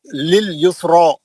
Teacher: रा को मोटा पढ़ेंगे, खड़े जबर के वक्त।